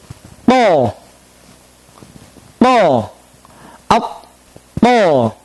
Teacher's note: lidah kita menegang ke atas dengan gigi, dua buah gigi yang depan. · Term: huruf ta